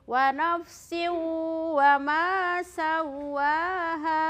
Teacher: huruf wau ada tanda tasdid jadi ketika kita ee membaca huruf yang ada tasdid maka cara memasukkannya itu diketuk selama dua Ketukan